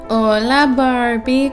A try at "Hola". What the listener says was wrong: That's not Spanish. It's hola. Like, you gotta pronounce the H in hola.